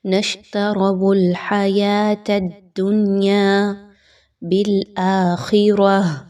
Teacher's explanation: خا اور را ان دونوں کو موٹا کر کے پڑھا جائے گا، باریک نہیں رکھنا۔ خا ہر حال میں موٹا پڑھے جانے والا لیٹر ہے، جبکہ را کے اوپر جب کوئی حرکت آ جاتی ہے تو اس وقت اس را کو پر پڑھا جاتا ہے، باریک نہیں پڑھتے۔